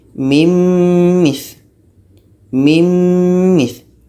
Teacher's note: Nun mati masuk kepada mim, jadi bunyi nun hilang, yang tinggal bunyi mim.